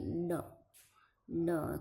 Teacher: જીભ ક્યારેક ઊંચે જઈને નીચે પછડાય અને જે ધ્વનિ પ્રગટ થાય તેને પડકાર વાળો ધ્વનિ કહે છે